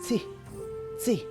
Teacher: Be very careful when you pronounce WEE-ZEE, and the second syllable is a TSE sound, tsi, tsi. So you don't say a clear T or a clear S, it's tsi. Run those two together. TS sound together.